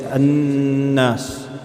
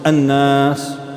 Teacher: It's a sound from the nasal, and you hold it in your nose, yeah? You hold it in your nasal, like so. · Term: ghunna